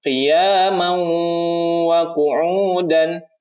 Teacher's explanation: dimasukkan tanwinnya ini langsung menuju ke wa. Ya, jadi tidak dibaca man, tapi mauwa. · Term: idgham bi gunnah